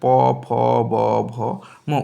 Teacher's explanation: যে সকল বর্ণ উচ্চারিত হয় তাকে বলা হয় অষ্ঠ বর্ণ দেখো প উচ্চারণ করতে দুটো ঠোঁট একসাথে আছে